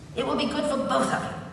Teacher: The stress is on the word both